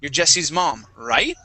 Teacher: when we say right our voice Scoops up okay that's the intonation we use like a question